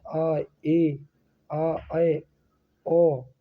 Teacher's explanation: जिन स्वरों के उच्चारण में विवृत स्वरों की तुलना में थोड़ा कम मुख खुलता है उन्हें अर्धविवृत स्वर कहते हैं।